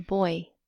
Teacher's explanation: which has the orange outline these are called diphthongs and basically they're like long vowel sounds but your mouth has two movements so it's like two vowels joined together without a syllable